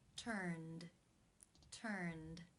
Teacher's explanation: The final sound in the infinitive is the N consonant sound, n, which is voiced. Therefore, it is case 2, where the ed is pronounced as the D sound.